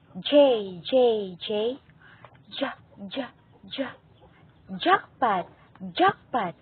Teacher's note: Ang panlalamunan, ito ay likurang bahagi ng dila ay dumidiis sa lalamunan.